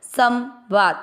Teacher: स के ऊपर बिंदी आधा न नहीं करना है ये आधा न, पर इसको ऐसे पढ़ना है संवाद। नाक से आधा न पढ़ रहे हैं। वा और द में अमिक्स करेंगे, वा को दीर्घ करेंगे संवाद।